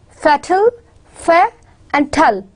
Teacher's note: The two syllables are there. Fair is the stressed one and tull is the unstressed. So it has unstressed ending.